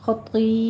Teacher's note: خطی دونوں پر پڑھے جائیں گے، خو بھی پر ہے، طا بھی پر پڑھا جائے گا